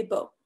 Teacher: kamatz is pronounced just like in traditional Ashkenazi pronunciation as an O. So instead of saying ba, you would say bo.